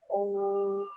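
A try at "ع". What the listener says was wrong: Again, try a little bit more harder from your throat. Oh.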